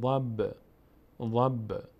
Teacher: اما این حرفا 5 حرف قاف، تا، با، جیم، دال وقتی ساکن مقداری قلقله میشن، یعنی میلرزه صدا در هنگام تلفظ اینها در مخرجشون، بهش میگیم قلقله.